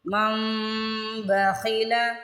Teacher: یہاں پہ من نہیں پڑھنا، مم غنہ بھی کرنا ہے، ناک میں آواز لے کے جانی ہے